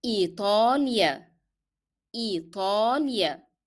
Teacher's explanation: remember to make ta as a hard sound and apply the long vowel. So pronounce all the long vowels with lengthening them.